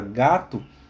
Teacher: Quando naturalmente nós falamos a palavra gato, essa letra O, essa vogal letra O, quando falada naturalmente, ela se assemelha a um som de U